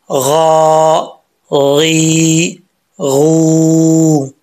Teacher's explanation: غین حروف مستعلیہ میں سے ہے، پر پڑھا جائے گا یعنی موٹا پڑھا جائے گا، ٹھیک ہے۔ تو اس کو بھی ایک الف کی مقدار جو حرکات ہیں کھینچی جائیں گی، لمبا پڑھا جائے گا۔